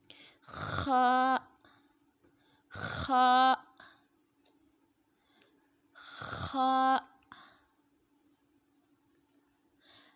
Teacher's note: حلق کے شروع کے حصے سے جو منہ کی طرف ہے خا اس سے ادا ہوتا ہے. خا، خا کو بھی ایک الف کی مقدار تک لمبا کر کے پڑھیں گے.